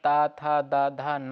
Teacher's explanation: ता था दा धा ना, ये दंत से है